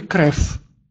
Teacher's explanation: «Крев» – это значит «кровь» по-русски. «Крев» в этом слове «в» стоит в конце и читается как «ф».